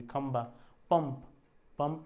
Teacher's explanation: ये जो आधा आपका ये आएगा ना पंचम प वाले का इसमें उसका उच्चारण म होता है तो न या म की ध्वनि आती है। अब अनुनासिक क्या